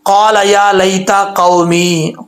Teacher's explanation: قاف کے آگے الف ہے، اس کو ایک الف کی مقدار لمبا کریں گے